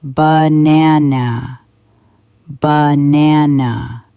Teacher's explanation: The middle is strong. The ends are weak. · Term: stress